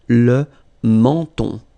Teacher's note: So you get two nasal. The first one here, en, and then the second one here, on.